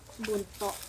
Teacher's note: bunyi kontoid plosif glotal tidak bersuara dan tidak beraspirasi. Pengucapan bunyi kontoid ini dengan menghalangi arus udara dari paru-paru.